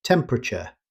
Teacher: Rather than pronouncing every syllable, native speakers say temperature. The extra vowel after the P is often dropped.